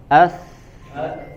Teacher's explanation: ujung lidah kita lebih tepatnya ditempelkan ke ujung gigi seri atas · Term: huruf sa